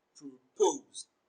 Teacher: Propose is a bisyllabic verb and it is stressed on the second syllable. Propose. Pose is pronounced louder and longer.